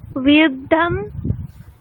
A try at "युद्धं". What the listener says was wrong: আচ্ছা ওখানে ধ নেই, ঢ আছে, ট ঠ ড ঢ, তাহলে বিউঢম।